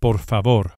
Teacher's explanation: each of the final R's is lightly flipped with the very tip of the tongue just behind and above the front teeth the very same tongue placement as an English d d but